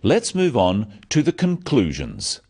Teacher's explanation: So says, let's move on to the conclusions. Stressing conclusions because it's the key word in this sentence. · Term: sentence stress